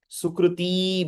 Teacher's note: The emphasis is on the ti actually.